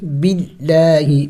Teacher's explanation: اس کے لیے قاعدہ ہے لفظ اللہ کے بارے میں، لفظ اللہ سے پہلے اگر زبر پیش آ جائے، زبر یا پیش آ جائے، پھر لفظ اللہ کو موٹا کر کے پڑھنا ہوتا ہے، اور اگر لفظ اللہ سے پہلے زیر آ جائے جیسے کہ یہاں پہ ہے تو وہاں لفظ اللہ کو باریک پڑھا جاتا ہے